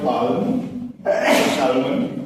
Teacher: Sometimes some consonants like the L here, they become vowels over time under the influence of different speakers. And in English, that A-L becomes a long A sound.